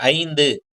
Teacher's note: இதே ஐ வந்து சொல்லின் முதல்ல வந்ததுன்னா அது வந்து 2 மாத்திரையிலிருந்து 1.5 மாத்திரை அளவு தான் ஒலிக்கும். இப்ப எடுத்துக்கிட்ட 5 அப்படின்ற வார்த்தையில ஐ வந்து 1.5 மாத்திரை அளவு தான் ஒலிக்கும். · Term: ஐகார குறுக்கம்